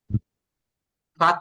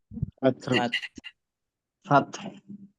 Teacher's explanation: ফাত শেষের দিকে বাতাস বের করতে হবে।